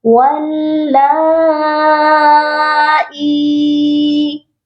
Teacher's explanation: یہاں پر ہم نے حمزہ کو ایک الف کے برابر اس لیے لمبا کرنا ہے کیونکہ یہ یائے مدہ کے ساتھ ہے، اور حروف مدہ ایک الف کی مقدار لمبا کر کے پڑھے جاتے ہیں۔